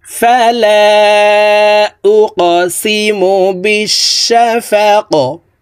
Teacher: কফ কলকলার হরফ উপরের দিকে ধাবিত করে ধাক্কা দিয়ে কফকে সাকিন করব।